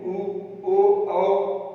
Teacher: और वृत्तमुखी में उ ओ औ, देखिए ओ पूरा वृत्त बन गया, ओ जब बोलेंगे ओ तो पूरा वृत्त बन जा रहा है